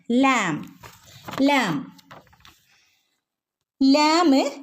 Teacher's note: മേലെ മുൻപല്ലുകൾ നാവിന്റെ അറ്റം എവിടെയാ തട്ടുന്നത് മേലത്തെ മുൻപല്ലുകളുടെ മോണയോട് ചേർന്നിട്ടാണ് വരുന്നത് നാവിന്റെ അറ്റം മേലെ മുൻപല്ലുകളുടെ മോണയും ചേർന്നിട്ടാണ് ലാം വരുന്നത്